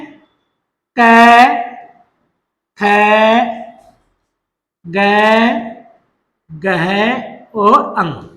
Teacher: कैवरग में क, ख, ग, गह और अंग। इनका उच्चारण स्थान कहां से होता है, कंठ से।